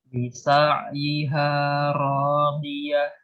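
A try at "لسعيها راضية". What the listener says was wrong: Tebalkan sedikit lagi dha-nya. Lisa'yiha radiyah.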